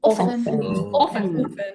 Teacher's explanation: The T is silent. There is no T in the word often.